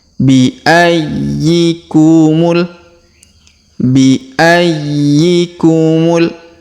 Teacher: Perhatikan huruf y ya. Ditahan dan ditekan karena terdapat tanda tasdid.